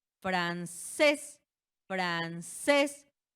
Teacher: recae la sílaba tónica en la última, es aguda y la regla nos dice que si termina en ns vocal, francés termina en qué?